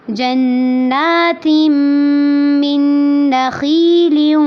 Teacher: جنات، اس میں دیکھیں جن نون مشدد ہے اور نون مشدد کے ساتھ نون کھڑی زبر بھی ہے، تو اس کو لمبا بھی کرنا ہے اور غنہ بھی کرنا ہے